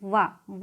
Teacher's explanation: दांत और ओठ दोनों को मिला करके बोला जाता है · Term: दंतोष्ठ